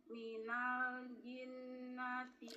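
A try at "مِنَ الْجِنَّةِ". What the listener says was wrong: Huruf jim, minal jinnati, kurang nempel tengah lidahnya.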